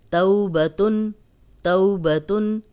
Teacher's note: جزم والی واو پیچھے زبر ہے تو یہ واو لین ہے، اس کو نرمی سے پڑھیں گے، آگے کچھ بھی نہیں، با پہ زبر، تا پہ تنوین۔